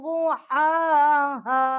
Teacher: جو حرف ہا ہے اس کو اقصائے حلق سے ہم نے اس کا مخرج نکالا ہے